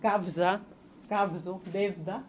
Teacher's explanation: la consonantización de la U implosiva en kavza, kavzo, devda, etc.